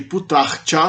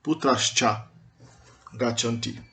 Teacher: o Visarga final mais uma palatal, como Cha, vira um S palatal. Então, em vez de Putrar Cha, vira Putras Cha.